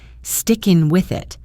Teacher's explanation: The ng in sticking links to the W in with the thef in with links to the I in it.